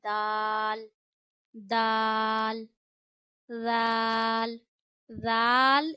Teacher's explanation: जैसे हम ता की अदायगी करते हैं। यानी दाल को आपने जबान की नोक और ऊपर के दांतों की जड़ों से अदा करना है।